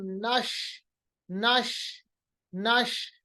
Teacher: तफशी का मतलब होता है फैलना, इंग्लिश में कहेंगे तो स्प्रेडिंग, आवाज को फैलाना, आवाज को मतलब अपने मखरज से काफी ज्यादा फैलना। · आवाज जो शीन की है वो फैल जाती है। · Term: सिफत तफशी